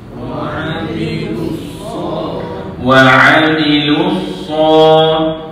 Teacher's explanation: Shad di situ pula panjang dua harakat.